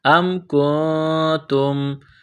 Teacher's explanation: ام کنتم، حمزہ کو میم کے ساتھ نصب کرنا ہے، حمزہ میم زبر ام، کاف نون پیش کو، نون ساکن کے بعد تا ہے، حروف اخفا ہے، نون ساکن پر غنہ کریں گے